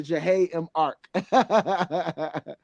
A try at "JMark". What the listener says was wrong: Jay. The H is silent. J and Mark.